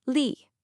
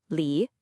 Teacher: For experience, you heard lee, a really sharp falling fourth tone. For manager, it would have been lee, a dipping third tone.